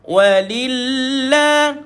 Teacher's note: Lafzul jalalah pada kalimah ini tuan-puan, tuan-tuan perlu bacakan dia di dalam keadaan yang nipis. Walillah. Bila dah sampai pada lillah, tuan-tuan baca sedang-sedang 2 harakat dah.